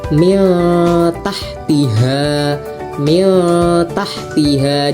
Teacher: Jadi ikhfa itu harus dengung ya bacanya itu harus didengungkan